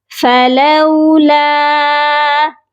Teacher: لام کو لمبا کر کے پڑھیں گے کیونکہ یہ الف مدہ کے ساتھ ہے